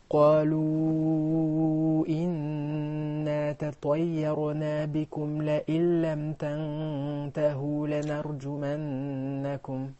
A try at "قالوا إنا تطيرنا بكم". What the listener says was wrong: We will stop at the word بكم. And the ra is ساكنة. Do not move it.